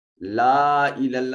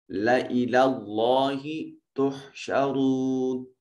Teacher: جہاں لام الف لا میں لام کو پڑھا جائے گا مگر ان کی الف کو نہیں پڑھا جاتا